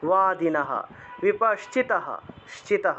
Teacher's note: লাইনের একদম শেষে বিসর্গ আছে সেজন্য পূর্ণরূপে হ উচ্চারণ